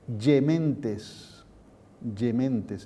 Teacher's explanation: La G ahora se pronuncia Y.